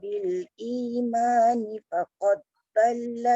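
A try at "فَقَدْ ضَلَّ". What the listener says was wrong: Dekat dal dengan dha tu, faqad tu bunda dia kena bunyikan. Faqad dhalla sawa. Faqad qalqalah, lepas tu dhal tu tebal.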